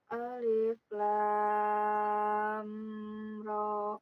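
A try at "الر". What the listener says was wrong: Ya, amnya jangan ditahan dah itu mah ada mim ya. Alif lam ro. Ya, amnya jangan ditahan ya, jangan lama. Genep harakat semua ini mah.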